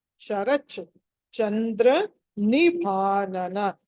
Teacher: చ కింద చ వత్తుంది రెండు చ లు పలకాలి